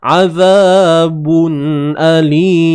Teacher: Tanwin bertemu hamzah. Izhar halqi. Jelaskan makhraj pada tanwin tu.